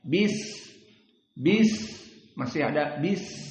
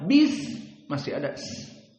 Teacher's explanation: Maka coba antum membaca bismillah, sin disukunkan. Maka di saat disukunkan sin, dia akan masih lari suaranya. Bis, masih ada bis, ada seperti ular. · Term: Sifat rokhawah